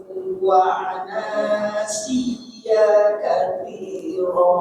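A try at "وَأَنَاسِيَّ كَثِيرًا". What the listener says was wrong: Iya-nya cepet sedikit pendek aja. Wa anasiya katsira. Tapi ingat setiap ana dalam Quran pendek kecuali ya. Kecuali yang di sini panjangin kalimat ini wa anasiya. Ya-nya dihentakkan siyya katsira.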